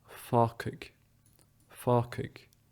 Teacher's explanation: that's because this G sound gets devoiced into a C sound. So it goes from g to k. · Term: devoicing